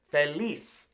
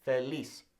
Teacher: The Z's in Spanish do not sound like Z, Z, okay? They sound like S's.